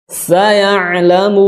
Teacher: yang lebih fasih, ya, tidak dihentakan, diminimalisir suara s-nya karena karakternya dia lemah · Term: Sin